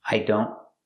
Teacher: The T in don't is a stop T. I don't. The tongue goes up, but you don't release it.